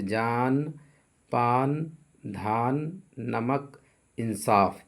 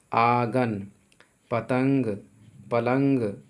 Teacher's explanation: نون غنہ اس کی آواز ناک سے نکلتی ہے